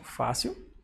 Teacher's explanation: É uma paroxítona, porque a penúltima sílaba é a mais forte, fácil. Ou seja, acentua-se.